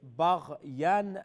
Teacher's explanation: غين there's no قلقلة, so it's بغيا